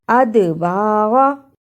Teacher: دال جزم کی صورت میں حرف قلقلہ ہے، یعنی اس لفظ کو ہلا کر پڑھنا ہے